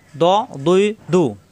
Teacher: জিব্বার গোড়ার কিনারা উপরের মারিদাতের গোড়া লাগবে। দ জবর আসলে আকার প্রকাশ পাবে না।